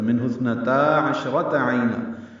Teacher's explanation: عشرہ میں شین ساکن ہے، اس پہ ہمس ہے، تفشی ہے ، را پر ہے، تائے مربوط ہے، اس کو جلدی پڑھنا